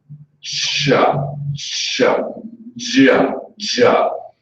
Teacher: This would be ch and j, so ch and j, because it starts like a stop consonant, and then becomes a fricative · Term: affricates